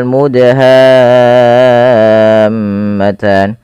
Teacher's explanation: huruf dal ini wajib kita baca dengan bacaan qalqalah yaitu huruf dalnya harus memantul